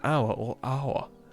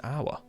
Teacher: because you don't pronounce the H in hour